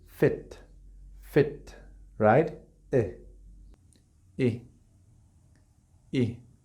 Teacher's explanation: No es I, nosotros pensamos en español que es una I definida, y no es una I definida, es una I tirando una E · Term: la I corta